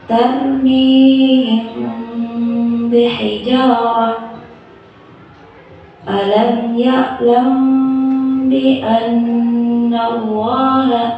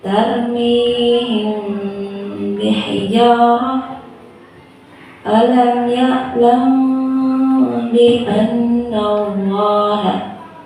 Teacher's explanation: Cara membaca ikhfa syafawi yaitu dengan suara yang samar antara mim dan ba pada bibir. Kemudian ditahan kira-kira 2 harokat atau ketukan seraya mengeluarkan suara ikhfa dari pangkal hidung.